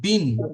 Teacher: বা নুন জের বিন এখানে এক আলিফ গুণনা করবো